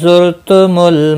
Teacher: रा साकिन से पहले पेश है, पूर्व पढ़ा जाएगा। लम साकिन को हिलाना नहीं।